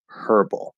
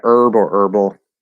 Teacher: I'm pretty sure most Americans in general don't say the H there are some Americans who do it is part of some